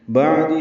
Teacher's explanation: عین ساکن پہ اظہار ہے، دال کو جلدی پڑھنا ہے